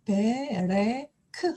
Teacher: 읽습니다 그리고 간혹 단어 끝에 오는 아까도 데레크 할 때 보셨는데요 단어 끝에 오는 카프에 붙는 쉐바 있어요 이것은 음가가 있지 않습니다 무서 입니다 그래서 베레크 하고 의로 처리를 하겠습니다 그러면 요약해서 유성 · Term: 무성